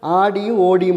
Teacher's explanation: ஆடில நெடில் வருது ஓடில முதல் எழுத்து நெடில் வருது